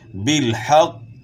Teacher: قاف کو موٹا بھی پڑھنا ہے اور قلقلہ بھی کرنا ہے